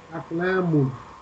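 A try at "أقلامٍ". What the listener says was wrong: Aklamin, okay. Manut always has kasra.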